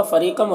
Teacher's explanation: را کے نیچے زیر ہے، را کو باریک پڑھیں گے، اور یا مدہ ہے، ایک الف کے برابر کھینچیں گے.